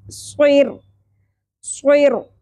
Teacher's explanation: را کو ساکن میں بدلتے ہوئے صد پر پڑھیں گے